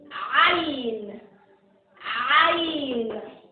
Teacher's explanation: Ain. This is sound coming from the middle of the throat.